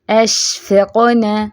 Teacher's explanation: اب قاف پہ قلقلہ بھی کرنا ہے، ٹھیک ہے، اور آخری حرکت کو لمبا نہیں کر دینا، جیسے اشفقنا، نہ لمبا نہیں کرنا۔